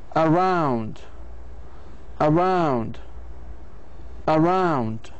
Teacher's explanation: The word around, on the second syllable, the pitch of the voice, the pitch of the voice does not remain level but falls from a higher to a lower pitch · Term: primary stress